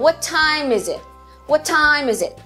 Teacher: Esse is it vai ficar bem fraquinho na frase.